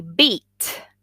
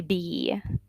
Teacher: when you say beat, it's a little stronger than when you say B and you let that slip. It's lax, right? Even though it's the same E.